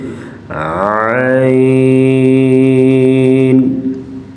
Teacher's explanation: حلق کے درمیان والے حصے سے عین